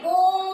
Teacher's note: प्लुत स्वर के उच्चारण में हमें 3 मात्राओं का समय लगता है।